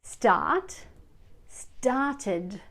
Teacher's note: Here the ed ending makes an id sound.